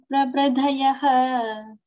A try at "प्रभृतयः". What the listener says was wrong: Prabhritayaha, not thayaha. Prabhritayaha, say that word.